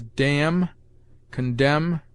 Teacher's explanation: N is sometimes mute after m